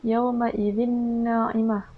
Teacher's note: hukum tajwidnya pada tanwin bertemu dengan huruf nun, maka di situ kita perlu dengung.